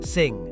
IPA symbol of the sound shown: ŋ